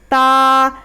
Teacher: ज़बान की नोक ऊपर के दांत की जड़ में लगेगी